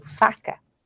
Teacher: não vibram as cordas vocais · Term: surdo